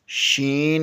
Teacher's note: وسط زبان بالمقابل اوپر کے تالو سے لگے تو شین ادا ہوتا ہے